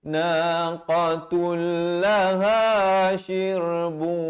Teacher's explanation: Di sini idgham bila gunnah. Asalnya ta tanwin di depan bunyi naqatun. Tapi datang lam jadi naqatul